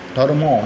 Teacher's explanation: শেষে যে ময়ের সঙ্গে অ ছিল, ধর্ম, একটা তো অ উচ্চারিত হচ্ছে না, তো সেই অটাকে আমি আলাদা করে নিয়েছি, ফলে এই ধর্মের যে ম, তার নিচে তাকে একটা হসন চিহ্ন দিয়েছি।